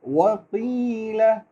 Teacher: قاف کو تھوڑا پر کریں گے، بے شک اس کے نیچے زیر ہے لیکن پر اس کو تھوڑا موٹا کریں گے